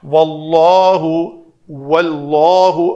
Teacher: واو کے لیے شفتیں دونوں ہونٹ گول، اور اللہ اسم جلالہ کا لام جو ہے وہ پر۔